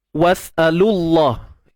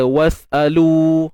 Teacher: waw mati jumpa dengan lam yang mati. So dari sudut bacaan kita akan terus lajakkan bunyilah was'alullah. Dah tak perlu dibaca panjang. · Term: iltiqa' sakinain